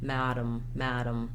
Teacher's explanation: the second letter a is basically um not there there's no vowel sound there · the word madam has first syllable stress · we have what's called the syllabic m here we go right from the d to the m the madam madam so you don't really don't need a vowel · If there's any vowel sound, it'll be a little bit of a schwa sound, but we have what's called a syllabic M here. We go right from the D to the M, dum, madam, madam.